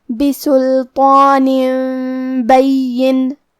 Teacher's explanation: کلمت بین میں یا پہ تشدید ہے، لہذا ہمیں یہ حرف کو 2 حرف کے برابر پڑھنا ہے۔ آخری میں نون کے نیچے تنوین زیر ہے، پھر حرف الفاء آتا ہے۔ · کلمت بین، با حروف القلب میں سے ہے، اور قلب کا معنی ہے بدل دینا، تو ہم یہ تنوین کو میم میں بدل کے اور غنہ کے ساتھ یہ حکم کو ادا کریں گے۔